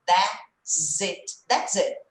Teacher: Ó, para quem já está acostumando com os sons grudados, esse S eu vou juntar com it, ele vai virar um som até meio de Z